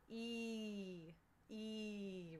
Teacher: in American English, our E sound is very, very tense. E, if this is the bottom of your mouth and these are your teeth, and this is your tongue, E, E, right?